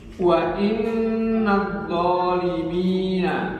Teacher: Kemudian ada gunnah, yakni nun yang bertasydid